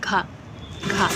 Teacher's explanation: तो घा कहाँ से आवाज़ निकल रही है, आपके कंठ से